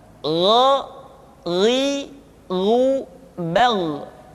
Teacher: Yang membedakannya adalah Kha mengalir nafas dan Gha tidak mengalir nafas. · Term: huruf Gha